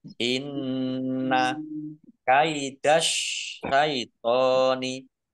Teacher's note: Inna nun tasdid dibaca guna atau mendengung, ditahan 2 harokat biar tampak dengungannya. · alif lam Syamsiah karena tidak dibaca. Langsung masuk ke huruf berikutnya yaitu shin.